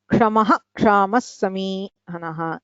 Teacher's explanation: विसर्गस्य विसर्गः इदमपि विशिष्य उच्चारणे, यथा क्षमः, क्षामः इत्यत्र जिह्वामूलीयः न भवति। क्षमः क्षामः इति अशुद्धं, तत्र विसर्गः पूर्णम् उच्चारणीयः इति नियमः अपि प्रायः सर्वैः ज्ञातं स्यात्।